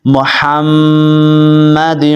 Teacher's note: ہا حروف حلقیہ ہے، اس کو آپ نے باریک ہا پڑھنا ہے، اور میم کے اوپر میں نے بتایا کہ ہمیشہ غنہ ہوتا ہے، یہاں پہ آپ نے غنہ کرنا ہے۔